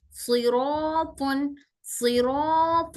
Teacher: यहाँ पर सौद भी मोटा पढ़ना है, रॉ को भी मोटा पढ़ना है, प को भी मोटा पढ़ना है।